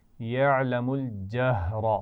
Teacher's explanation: ہا کو واضح کرنا ہے اور اس میں را موٹی پڑی جائے گی